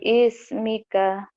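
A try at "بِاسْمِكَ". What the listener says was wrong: biismika, mana biisnya? Nggak ada i-nya, ini namanya hamzah wasal.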